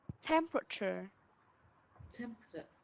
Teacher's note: nó có vẻ là 4 âm tiết nhưng thực chất nó lại có 3 âm tiết thôi ạ. Nó sẽ có 3 âm là temperature và cher.